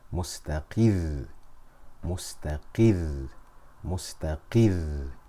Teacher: I'll raise my voice ever so slightly on the ra in order to differentiate between mustaqir and mustaqir. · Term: nabr